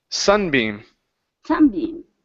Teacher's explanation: the stress is at the beginning of the word.